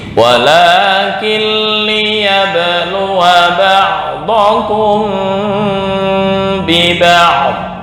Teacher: Tapi ketika wasal wawu pendek, satu harokat doang.